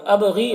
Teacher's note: با میں قلقلہ ہوگا